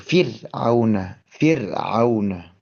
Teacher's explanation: ro sukun ini menjadi huruf yang tipis